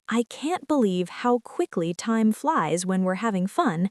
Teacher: Put emphasis on quickly to show surprise. Use a slightly rising tone on time flies to express excitement. Drop the g in having because in natural speech, native speakers often say having fun. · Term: rhythm and intonation